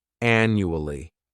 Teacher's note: And the third syllable has that schwa